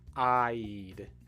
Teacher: even though there is only one vowel sound, the I, it's a long I. There's actually two sounds to this vowel sound.